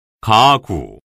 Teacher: 기역이 2번 발음되죠. 이때 첫 번째 기역은 무성음으로 발음되고 두 번째 기역은 유성음으로 발음됩니다. 기역이 유성음으로 발음되는 경우는 두 번째 기역과 같이 아와 우와 같은 모음 사이나 니은, 리을, 미음, 이응의 자음과 모음 사이입니다.